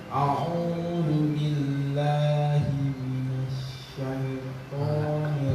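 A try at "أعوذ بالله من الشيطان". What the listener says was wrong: Tapi pas mina tadi antum hilangkan suara itu. Ulang.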